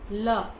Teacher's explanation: जीभ का अगला भाग मसूड़े को छूता है और उसके दोनों ओर रास्ता खुला रहता है और वायु निकलती रहती है। ल पार्श्विक ध्वनि है।